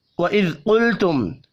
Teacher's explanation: قاف پر پڑھا جائے گا، لام ساکن پر قلقلہ نہیں کرنا. میم ساکن کے بعد یا ہے، اظہار شفی ہوگا، غنہ نہیں ہوگا.